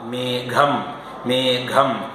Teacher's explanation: മേഘം എന്ന് പറയുമ്പോൾ തൊണ്ടയിൽ ഒതുങ്ങുകയാണ് മൃദുവിന്റെ ഘോഷമാണത്